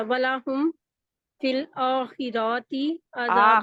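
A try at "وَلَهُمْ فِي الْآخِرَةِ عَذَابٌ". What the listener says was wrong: آخراتی، را کو کیوں کھینچ رہے ہیں؟ را کے آگے نہیں ہے.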